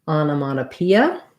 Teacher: we have the stress on the second to last syllable P, onomatopoeia. Secondary stress on that first syllable. So the first letter O says ah, ana.